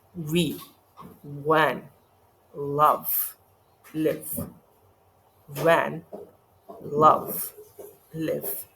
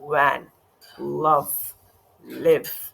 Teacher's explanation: जब आपका जो नीचे वाला लिप है, बॉटम लिप है, जब टॉप टीथ के साथ मिल जाता है, एयर रिलीज हो रही होती है, तब ये वी प्रोनाउंस होता है और ये भी ज़रा एक सॉर्ट ऑफ हैवी लगता है क्योंकि आपने इसमें एम्फेसाइजेशन भी करनी होती है वी की.